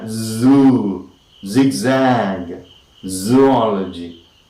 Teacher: all right all this we have the sound z that is the blade of the tongue is against the alveolum